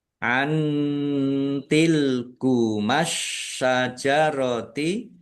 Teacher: Nun sukun bertemu dengan huruf ta. Bacaan ikhfa dibaca samar-samar.